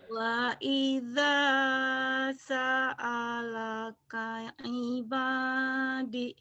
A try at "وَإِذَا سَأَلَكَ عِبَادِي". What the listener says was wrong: D-nya panjang. وإذا وإذا سألك عبادي